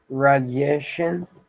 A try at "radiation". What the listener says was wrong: Now, that's a great word to use, the perfect word, but it's pronounced radiation. Radiation. So it's got that long A, radiation.